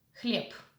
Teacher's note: In the Russian language, the voiced consonants are pronounced as voiceless consonants at the end of the word. In this case, voiced consonant B is pronounced as its voiceless pair P, хлеб.